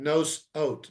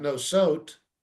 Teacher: And the same thing, nos ot, not nosot, but nos ot. Again, a shva with an aleph tells you have to pause between the two syllables